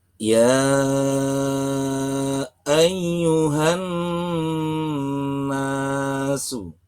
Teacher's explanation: nun dengan tashdid berwarna merah adalah aturan bacaan ghunnah. Bacalah dengan panjang dua ketukan.